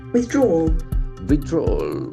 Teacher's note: that last L is almost silent